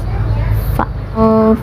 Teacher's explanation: Mahraj fa yaitu dari perut bibir bawah sejajar dengan ujung gigi seri atas.